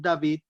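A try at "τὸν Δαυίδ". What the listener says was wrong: Ton David, no me castellanicen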